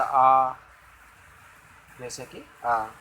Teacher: विवृत, जिनके उच्चारण में मुख पूरा खुलता है। जैसा आ, जैसे कि आ।